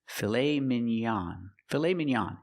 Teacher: We use the ah sound, the open ah, ah like hot and stop.